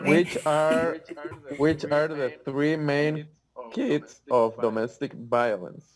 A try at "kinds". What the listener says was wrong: Kids, you said, or kinds.